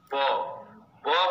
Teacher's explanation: पवर्गी जो ब है उसका उच्चारण बाहर से होठ से होता है